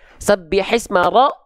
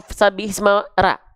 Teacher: Kalau huruf ro kita baca condong vokalnya berubah menjadi vokal O ya?